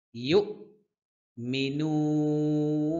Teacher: এখানে এক আলিফ টান হবে ইউ হঠাৎ করে থেমে যেতে হবে হামজার উচ্চারণ করতে হবে হঠাৎ করে থামতে হবে